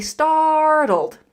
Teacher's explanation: in the word startled, we also have that flap t